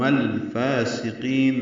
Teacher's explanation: فا کو 2 حرکات لمبا کرنا ہے